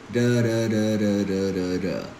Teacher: It's actually a very soft T, and you might hear people calling it flap T, fast D, tap T.